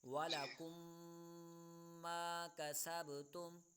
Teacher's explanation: یہاں پر میم ساکن کے بعد دوسری میم آ رہی ہے تو یہاں پر غنہ ہوگا۔ یعنی ہوگا ادغام شفوی کا قاعدہ لگے گا.